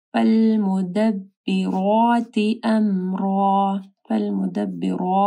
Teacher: را کے اوپر جو ہے زبر ہے تو را موٹی پڑی جائے گی